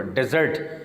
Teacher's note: اس کو زور ہوتا ہے زرٹ کے اوپر